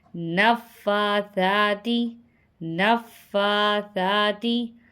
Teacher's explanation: یہاں پہ فا پہ بھی کھڑا زبر ہے اور سا پہ بھی کھڑا زبر ہے، دونوں کو برابر سے کھینچ کے پڑھیں گے